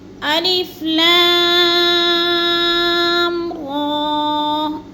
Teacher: را کو ہم نے کم لمبا کرنا ہے اور لا کو لمبا کرنا ہے، اس لیے زیادہ کہ ادھر مد ہے۔